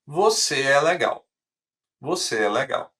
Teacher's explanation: A gente tem uma entonação descendo.